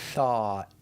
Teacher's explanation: we start with a T H that makes the air sound with our teeth